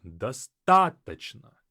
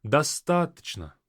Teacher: The stress falls on the a, достаточно. And so whatever follows that is devoiced.